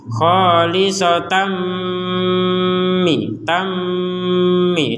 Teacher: kalau ada mim bertasdid dengan Nun bertasdid maka ini dibacanya 100% dengung